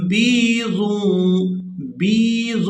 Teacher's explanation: با کو یا ساکن کے ساتھ ملاتے ہوئے کھینچ کر ادا کریں گے کیونکہ یہ یا مدہ ہے